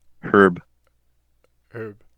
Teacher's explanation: I think the H is silent.